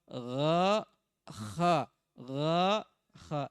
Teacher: Dari kerongkongan bagian atas ada 2 huruf juga. Huruf ghain dengan huruf kha.